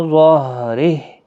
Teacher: ظہرہ را باریک پڑھا جائے گا، ہا ساکن پڑھا جائے گا